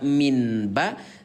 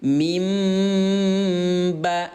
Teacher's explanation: Yang diganti adalah bunyi nun yang baris mati ini, Ayah Bunda, menjadi suara mim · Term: iqlab